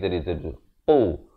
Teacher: Qaf berat di pangkal lidah